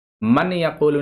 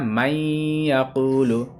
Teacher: جیسے نون ساکن کے بعد یا ہے، تو اب یہ نون ساکن کو نہیں پڑھنا ہے، میم جو ہے نا وہ یا میں ملے گا، نون نہیں پڑھا جائے گا، نون پھر یہاں پہ سائلنٹ ہو جائے گا۔ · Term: ادغام